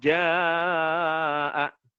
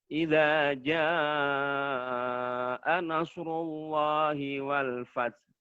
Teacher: Kemudian pada kata jaa, pada kalimat jaa ini dibaca 5 harokat atau 5 ketukan.